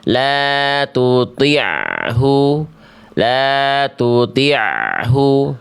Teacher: Jadi, harus masih ada suara ain yang sedikit mengalir. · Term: ain sukun